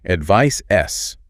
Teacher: The noun ends with S. Feel your throat, no vibration. It's unvoiced.